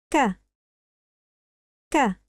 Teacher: Pronounce the regular [k], BUT with slight aspiration